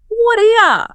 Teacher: And the R basically disappears or becomes a schwa sound, that little sound, and U becomes yeah.